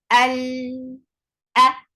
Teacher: Al hamza is very sharp, pinchy sound. And it is from the last part of your throat, and the sound is short and attached with lam.